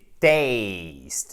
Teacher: C'est pas test, c'est taste. C'est une diphtongue, c'est le même A que dans oseille.